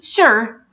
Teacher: the SU is pronounced like sh sound, not like j sound